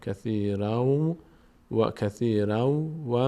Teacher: باید این تنوین رو تبدیل کنیم به حرف واو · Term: ادغام